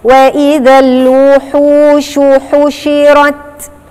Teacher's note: هي عايزة يعني تتحققي في إخراجك الشين وتديها التفشي اللي هو من صفاتها. التفشي يعني البق بتاعك ده بيتملي هوا وانت جاية تنطقيه